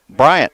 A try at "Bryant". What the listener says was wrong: There's no T in Bryant.